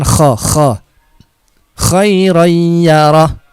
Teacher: huruf k itu di ngorok ya ada di tenggorokan